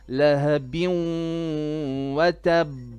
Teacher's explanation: You have to put a bit of noon, okay, of ghunna. It's called idgham with ghunna.